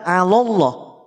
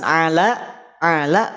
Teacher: lam di lafaz ala ini termasuk huruf tipis ketemu lafaz Allah yang tafkhim